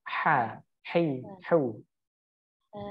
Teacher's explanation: makhrajnya keluar daripada tenggorokan bagian tengah